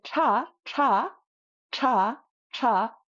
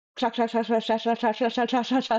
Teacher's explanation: Kra, or even ksha, when we do it with the sh sound, it still rolls against the roof of our mouth. So when we say tra, tra, tra, tra, our tongue is still rolling against the roof of our mouth